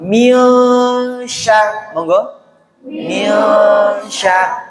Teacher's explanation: Ausat artinya tengah. Nah, jadi ikhfa-nya setengah, dengungnya juga setengah. Maksudnya ikhfa-nya 50%, dengungnya juga 50%.